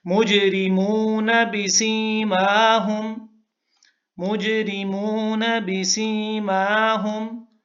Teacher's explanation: اگر آپ مجرمون کو الگ پڑھیں گے تو شاید آپ نون کو کھینچ لیں، نون کو کھینچنا نہیں ہے